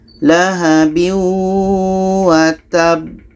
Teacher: Watab. Setelah kita berhenti, ada b-nya, ada pantulannya.